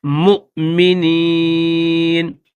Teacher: تو نیچے جو واو ہے اس واو کو نہیں پڑھیں گے بلکہ میم کے بعد ڈائریکٹ ہم نے حمزہ کی آواز نکالنی ہے اور تھوڑا سا ہلکا سا جھٹکا دے کر پھر اس کو پڑھنا ہے